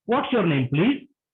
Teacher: the intonation is rising intonation. Okay, the sound goes a little up.